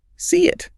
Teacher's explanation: That physical dropping motion while pushing air generates a Y sound.